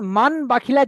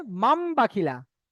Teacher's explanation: তানবিন নুন সাকিন কে মিমের দ্বারা পরিবর্তন করে এক আলিফ পরিমাণ গুণনা করে পড়তে হবে · তাহলে মান বাখিলার জায়গা আমরা পড়বো মাম বাখিলা। নুন সাকিন আওয়াজকে মিমের দ্বারা পরিবর্তন করব। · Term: ইকলাব